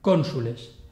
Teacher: la o de cónsules es larga por posición pero la u es breve